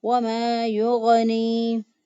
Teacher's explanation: مدہ ہے۔ وَمَا يُغْنِي، غین کو ادنیٰ حلق سے ادا کیا، ادنیٰ حلق یعنی گلے کا وہ حصہ جو منہ کی طرف ہوتا ہے وہاں سے غین ادا ہوتا ہے ، وہاں سے دو حروف ادا ہوتے ہیں، غین اور خو،